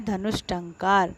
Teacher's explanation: इसके बाद है धनुष धन, धनु धन टंकार शब्द बनता है धनुष टंकार। अब देखिए विसर्ग के बाद ट है तो अब इसको आधा श, कौन सा श, मूर्धन्य श आधा आदेश होकर के बनेगा शब्द धनुष टंकार